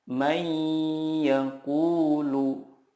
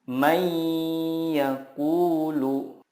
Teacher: meleburkan nun sukun ke huruf berikutnya dan disertai gunnah yang dipanjangkan 2-3 harokat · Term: idgham bila gunnah